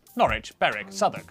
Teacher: W at the start of the final syllable is silent